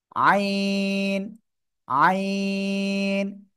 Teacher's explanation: গলার মধ্যখান চেপে আমরা এই অক্ষরটা উচ্চারণ করব